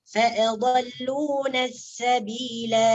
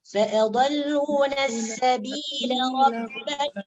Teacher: فأضلونا السبيلا. Jadi apabila diwakaf, alifnya ditetapkan berfungsi, ya. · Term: waqaf